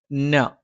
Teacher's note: നാവിന്റെ അറ്റം മേലെ മുൻബല്ലിന്റെ മോണയിലാണ്